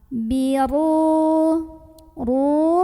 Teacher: dibaca secara tafkhim karena ro berbaris dan barisnya di atas jadi bacanya tebal biru ru Mad Thobi'i karena ada wau sukun sebelumnya dhamah dibaca